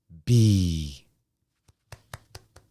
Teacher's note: when you make the b sound you feel the vibration